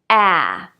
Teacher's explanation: The vowel a, as in cat or bad, is more open. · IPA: /ae/